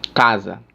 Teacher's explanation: É uma paroxítona, ou seja, é a segunda sílaba tônica de trás para frente, ou seja, a penúltima.